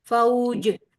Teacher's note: فوج جٹکے کے ساتھ. جیم ساکن ہو جائے گا تو حروف قلقلہ میں سے ہے جیم